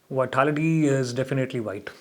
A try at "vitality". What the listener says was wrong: Can I just check your pronunciation of the word vitality, not vitality? You got to focus on your v. Vitality again. Can I have a v? Vitality. You've still got the W, so go away and practice that.